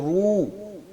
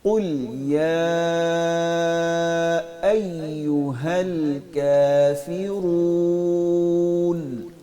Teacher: آواز کو ناک میں نہیں لے کے جانا، رو ایسے نہیں کہنا، رو اپنے ہونٹوں کو اچھی طرح گول کریں گے، رو. ٹھیک ہے.